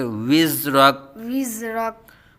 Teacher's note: زا کو سیٹی کی طرح تیز آواز سے پڑھیں گے